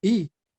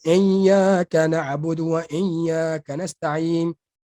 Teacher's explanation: Arab sebut hamzah i daripada leher ni